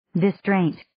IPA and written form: dɪ'streɪnt (Distraint)